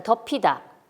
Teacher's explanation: 연음해서 피읍 받침이 모음인 이에 연음되어서 덮이다가 됐는데